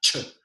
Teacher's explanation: CH en realidad es una sola consonante. Es una consonante africada.